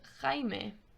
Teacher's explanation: if you remember it's that throaty h sound